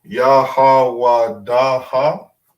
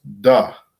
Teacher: da ha because you have a heart at the end but because it connects you don't pronounce the last character you don't pronounce the ah